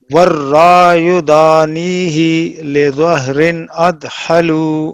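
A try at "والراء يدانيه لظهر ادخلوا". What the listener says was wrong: ہی کو لمبا نہیں کریں، والرا یدانیہ لظہر ادخلوا،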